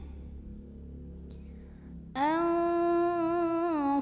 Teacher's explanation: Maka cara membunyikannya, mim pertama dileburkan dengan mim kedua sambil dengung. Jadi di sini kita tahan dulu bunyi amnya. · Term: idgham mimi